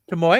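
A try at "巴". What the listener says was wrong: It's 3 syllables. Tomoe.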